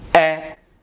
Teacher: Il faut ouvrir la bouche. Les lèvres sont tirées. La langue touche les dents du bas. C'est un son antérieur. Il vient du devant de la bouche. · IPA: [ɛ]